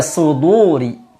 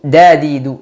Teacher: Dal jangan ikut tebal. Yang tebal adalah shadnya. Adapun dal dibaca dengan tipis. Tidak boleh dalnya terpengaruh dengan shad. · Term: tipis dalnya